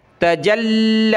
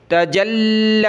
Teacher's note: لام پر سختی کر رہا ہوں، رک رہا ہوں